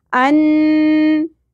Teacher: غنہ بھی ہوگا ناک میں اواز کو ٹھہرانا ہے ہولڈ کر کے رکھنا ہے